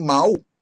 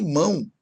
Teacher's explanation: A outra semivogal é o som U, que aparece em mal, por exemplo, em igual, por exemplo, e em mão